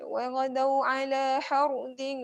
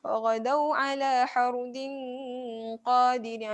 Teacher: ra dekat sini ra tebal ya. Sebab sebelumnya baris atas ra tebal.